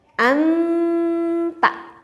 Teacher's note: Jadi nun dengan ta itu makhrajnya sangat dekat sekali. Sehingga kalau kita membacanya seperti ini, ta, ta kitanya di depan. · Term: ifa